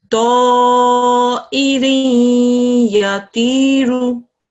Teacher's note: A Ya mushaddad after a tanveen, assimilation is going to take place 2 seconds